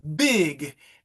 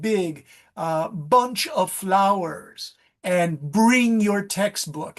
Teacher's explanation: if you look at the voiced B's, bilabial plosive